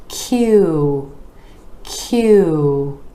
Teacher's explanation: sure that your lips are rounding out for this sound so we're going from the consonant where the back of the tongue rises up to the palate and then the lips are moving forward